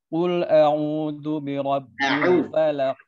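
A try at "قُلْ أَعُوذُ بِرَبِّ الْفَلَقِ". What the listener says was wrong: Nah, ainnya belum jelas. Qul a'udzu. A'u ya, a'u bukan au.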